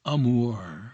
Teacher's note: that long ooh sound with the rolled R at the end of it